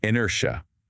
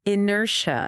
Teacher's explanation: See how the second syllable is stronger?